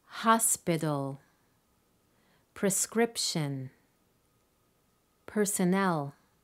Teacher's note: the stress falls on the first syllable in hospital the second syllable in prescription and the third syllable in personnel